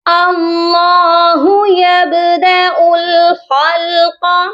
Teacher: اللہ یبدأ الخلق، یہاں پر بھی آپ دیکھیں یب، یہاں با پر ہم قلقلہ کریں گے اور حمزہ کو ڈائریکٹ لام کے ساتھ ملائیں گے